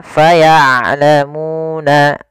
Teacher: Maka ain jangan terlalu dialirkan suaranya, tapi tidak juga ditahan. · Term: sifat bainiyah